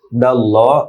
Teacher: আল্লাহ শব্দের লাম, লা না হয়ে ল হবে, মোটা হবে, এক আলিফ লম্বা হবে।